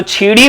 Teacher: बुंदेली जो बोली है इसमें क्या किया जाता है कि स के बदले छ, च के बदले स का प्रयोग किया जाता है